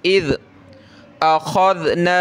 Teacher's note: ज़ाल पे ज़बान निकालें थोड़ी सी